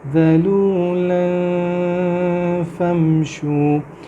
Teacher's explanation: ارض ذلولا، یہ ذلولا نہیں ہے، یہ ذال ہے، ذلولا فامشوا، ذلولا کے بعد میں اخفا کر رہا ہوں، ساؤنڈ کو تھوڑا سا ناک میں چھپا رہا ہوں